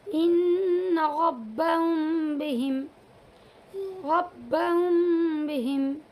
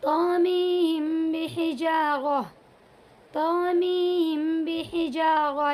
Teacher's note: میم کی آواز کو تھوڑا ناک میں لے جائیں گے اور با کی آواز کو زیادہ نکالیں گے۔ ٹھیک ہے، طامیم بحجارہ، طامیم بحجارہ، یعنی میم کی آواز کم اور با کی آواز زیادہ آئے گی، اسے اخفاء شفوی کہیں گے۔